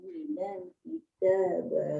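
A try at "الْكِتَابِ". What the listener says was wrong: Ba tu kita bi, jangan kita ba.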